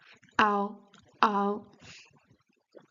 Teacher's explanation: Since we start here with an A, which is a really big and open sound, then we don't have to start the O with a closed O, but we directly shift from the A to the O